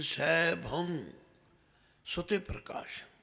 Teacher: इस भंग का उच्चारण गगे नाल नहीं करना, ये नक दे विच जिथों नक की आवाज़ शुरू होंदी है